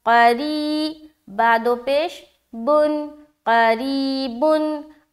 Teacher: करीबुन, क़ाफ़ ज़बर क़ा, रा या ज़ेर री। अब यहाँ पर रा के नीचे ज़ेर है, तो इस रा को हम बारीक रखते हुए पढ़ेंगे